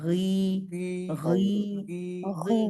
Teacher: मोटा भी होगा गी गी गी गी गी क्योंकि जुबान की जड़ ऊपर उठेगी ना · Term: गान खड़ी जेर